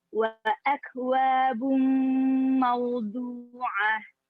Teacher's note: dhammah tanwin bertemu huruf mim merupakan idgham bigunah dan termasuk idgham kamil ditandai tasydid di huruf mim.